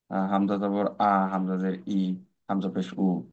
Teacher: হামজার উচ্চারণের মাখরাজ হইলো হলকের শুরু